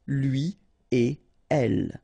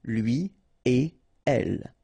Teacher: you don't make any liaison. So no links after et.